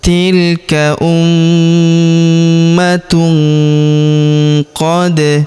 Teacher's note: Kemudian tanwin un huruf tun ya ta marbutah bertemu huruf qo maka tanwin unnya melebur ke huruf qo. Kita baca dengung dan samar. Dengungnya kita tahan dua sampai 3 harakat.